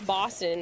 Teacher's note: O's have an au or an aw sound to them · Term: Boston accent